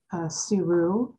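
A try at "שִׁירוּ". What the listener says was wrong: That's a shin.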